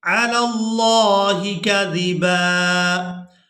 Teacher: لفظ اللہ کے لام سے پہلے والے حرف پر زبر ہے تو یہاں اللہ کے لام کو پورا ادا کیا جائے گا